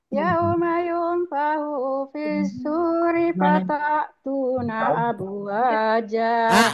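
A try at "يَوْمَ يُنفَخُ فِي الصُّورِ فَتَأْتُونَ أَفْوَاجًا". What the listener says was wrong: Afwaja Bu, bukan abwaja. Afwaja.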